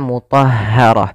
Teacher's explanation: setiap tak marbutah di akhir waqaf dirubah menjadi ha yang disukunkan maka mutahaharah.